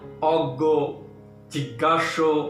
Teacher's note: যেমন জ্ঞান, জ্ঞাতি ইত্যাদি। কিন্তু শব্দের মাঝখানে বা শেষে থাকলে এর উচ্চারণ হয় গগ্গ এর মতো